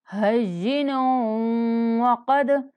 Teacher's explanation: نون کو غنہ کے ساتھ واو سے ملانا ہے۔ ہین وقد، قاف کو موٹا پڑھیں گے اور دال پر قلقلہ کریں گے۔